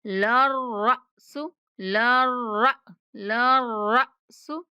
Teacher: را کے بعد ساکن حمزہ ہے تو اس کے بعد جھٹکے کی آواز کے ساتھ پڑھیں گے